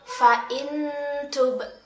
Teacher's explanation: ada nun sukun yang bertemu dengan huruf ta kita membacanya dengan nun sukun itu masih terdengar suaranya tetapi disertai dengan samaran makhroj huruf ta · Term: ikhfa Haqiqi